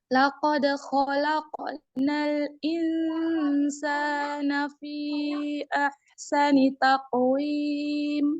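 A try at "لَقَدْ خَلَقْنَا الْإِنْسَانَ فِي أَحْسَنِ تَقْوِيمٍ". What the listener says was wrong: Usahakan sa-nya 2 harkat ya. Laqad khalaqnal insana fi ahsani taqwim. Sa-nya kepanjangan. Nah, itu 2 harkat aja sa-nya.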